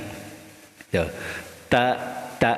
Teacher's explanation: ujung lidah dengan pangkal gigi seri atas pangkalnya pangkal gigi seri atas